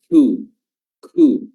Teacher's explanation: percikan tambahan beda dengan huruf k C ya ku ku ya dia juga dipangkal lidah namun di atas sedikit atau di depan sedikit dari huruf q